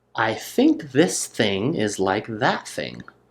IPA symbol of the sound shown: θ, ð